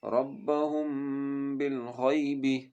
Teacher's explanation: میم ساکن کے بعد جب با آتا ہے نا تو اس میم ساکن پر بھی غنہ ہوتا ہے